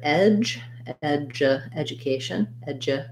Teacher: this d u is more of a j a j sound · Edja, we have the eh sound. This D-U is more of a J sound. So you could think about it like this word edge, edja, education, edja.